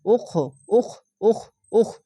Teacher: এখানে কলকলা হবে না খটি মোটা করে